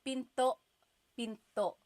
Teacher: Do you hear the glottal stop when I say pinto? Pinto. So it's not pinto.